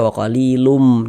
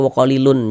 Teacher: Jadi bunyi tanwin dimasukkan ke huruf mim, melebur ke huruf mim. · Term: idgham bi gunnah